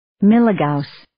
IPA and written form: ˈmi-lə-ˌgau̇s (Milligauss)